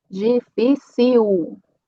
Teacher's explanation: tem uma L no final. Então, também vai ser o som U